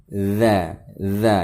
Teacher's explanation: Huruf zal termasuk dalam huruf lisan, yaitu keluarnya huruf dari ujung lidah dari arah punggungnya dan menempel pada ujung dua gigi seri atas